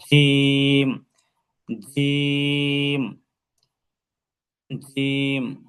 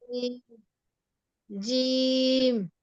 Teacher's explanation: জিহ্বার গোড়া নিচে, জিহ্বার মধ্যখান থাকবে, তালু হতে পৃথক হবে। আর উচ্চারণে আওয়াজ মজবুত এবং ধাক্কা দিয়ে উচ্চারিত হবে। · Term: কলকলা